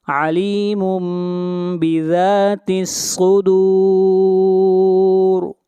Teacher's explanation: صاد کو موٹا پڑھیں گے، صاد حروف مستعلیہ میں سے ہے، اور را کو یہاں پر موٹا پڑھا جائے گا